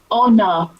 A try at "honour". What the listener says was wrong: You actually read out humour, honestly. So honour. That's one of the words where I think your brain went, humour, I know that word. But when you look at it, the spelling's completely different. Honour.